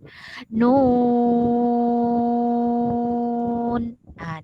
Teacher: Nun itu adalah nun yang berbaris doma, kemudian ada huruf waw sukun, di atasnya ada mad lazim, kemudian diakhiri dengan nun. Jadi dibaca nun, nu dulu 6 harokat baru matikan huruf nun. Nun.